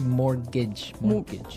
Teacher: it has a t in it but you don't pronounce it you say mortgage morgage so not Mort morgage not morgage morgage · I mean, there's this strange mortgage with a T. Yeah, it has a T in it, but you don't pronounce it. You say mortgage.